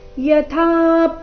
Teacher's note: ಯಥಾ ಇಲ್ಲಿ ಥ ಮಹಾಪ್ರಾಣ ದೀರ್ಘ, ಥ ಮೇಲೆ ಪದ್ದು ಆಘಾತ ಕೂಡ ಬರಬೇಕು.